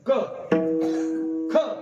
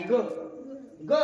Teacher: क जरा क चा उच्चार केला ना घशातून करावा लागतो. क ख या दोन शब्दाचा उच्चार करण्याकरता जेवढा जोर द्यावा लागतो तेवढा ग चा उच्चार करण्याकरता द्यावा लागत नाही. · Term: कठोर वर्ण